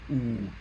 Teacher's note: you push your tongue towards a more back position, and it's still high. It's still close to the highest part of your mouth, towards the roof of your mouth, the palate. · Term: high back and rounded